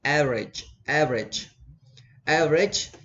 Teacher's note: the stress on the first syllable